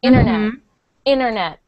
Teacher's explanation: when it comes after the N we drop the te sometimes